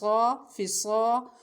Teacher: صاد کو خوب موٹا کر کے پڑھنا ہے اور سیٹی والی آواز آئے گی، اور لمبا کرنا ہے ایک الف کے برابر